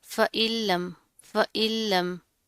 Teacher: नून साकिन है, उसके बाद हरूफ यरमलून में से लाम आ रहा है, लाम के ऊपर तशदीद है, मजबूती से इसको जमा कर पढ़ेंगे